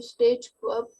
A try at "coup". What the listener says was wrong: Actually, here the P is silent. Coup. It is always pronounced as military coup.